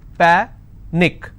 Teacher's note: Panic is pa-nick, which means I will stress on pa and it's pronounced as panic.